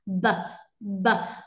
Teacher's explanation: Âm này thì ngoài hơi ra thì chúng ta còn có âm thanh đi ra. B, b. Mọi người thấy rằng là hầu như khi mà đưa tay ra sẽ không cảm nhận được cái luồng hơi nào mấy, bởi vì thừa âm thanh nó sẽ ra nhiều hơn rất là nhiều. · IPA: /b/